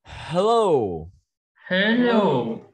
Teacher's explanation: âm hát mình đẩy hơi ra một chút nữa, âm hát phải đẩy hơi ra nào